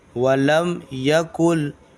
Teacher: نون کو یہاں پر چھوڑ دے گا اور لام کو پکڑے گا